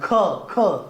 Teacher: यांचा उच्चार करताना ह चा उच्चार केला होतो किंवा हवा जोरात फुफ्फुसावाटे एकदम बाहेर फेकली जाते त्याला महाप्राण म्हणतात